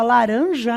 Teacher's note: omite o S dizendo laranja, mesmo ao se referir a mais de uma fruta